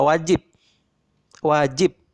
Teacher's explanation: kalian perhatikan bunyi yang dihasilkan itu tidak murni bunyi B secara penuh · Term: bunyi P tertutup